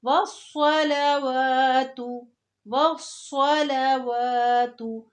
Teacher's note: التحیات للہ، آگے ہے والصلوات، یہ وص ہے، وص، اس کو وس نہیں کہیں گے، سین نہیں بولنا، صاد بولنا ہے